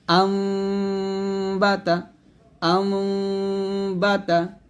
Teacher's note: দুই ঠোঁট মিলে গুণাটা করতে হবে, তবে পুরোপুরি মিলবে না। সঠিক নিয়মটা হচ্ছে এখানে অর্ধেক নুন সাকিন উচ্চারণ হবে, আবার অর্ধেক মিম সাকিন উচ্চারণ হবে, যাকে ইকলাব গুণা বলে।